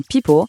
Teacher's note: Pour le son B, comme dans But, si on place une main sur sa gorge, on sent une petite vibration he maintenant pour le son P, comme dans People, il n'y a pas de vibration. À la place, il y a un petit souffle d'air.